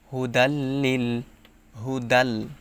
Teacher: তানবিনের পরে ইদগামে বেলা গুন্নাহর হরফ লাম আসছে তাই গুন্না ছাড়া মিলিয়ে পড়তে হবে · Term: ঈদগামে বেলা গুন্নাহ